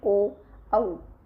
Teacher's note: ओ औ कंठ ओष्ठ से बोले जाते हैं, ओ औ। तो इसका उच्चारण कंठ से भी हो रहा है और ओष्ठ से भी हो रहा है। ठीक है, तो इनको क्या बोलेंगे, कंठ ओष्ठ बोलेंगे।